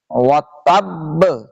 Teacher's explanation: تا کو سختی سے آ کر با سے ملائیں گے، زبر کو چھوڑ دیں گے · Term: جماؤ کے ساتھ قلقلہ